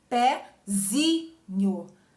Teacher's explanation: porque não é mais pé a sílaba tônica, passa para o zi, pezinho. Zi é a sílaba tônica, e aí não tem mais acento, certo?